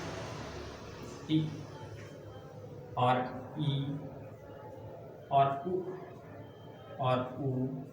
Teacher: इनको बोलने में दोस्तों हमारे मुख जो है कम खुलना पड़ता है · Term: समृत